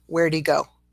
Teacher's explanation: we further contract, or we drop the H before, if we have he or him or her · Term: dropping of the H sound